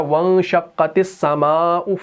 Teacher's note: سین ہمارا شمسی حروف میں سے ہے، تو الف لام دونوں کا تلفظ نہیں ہوا ، اس تا کو ہم نے سین سے ملا دیا، اس